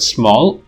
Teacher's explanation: the nasal stops in words small and snooze in english are devoiced due to progressive assimilation to the previous voiceless alveolar fricative · voiced bilabial nasal loses its voicing and becomes devoiced due to the influence of cell which is a voiceless fricative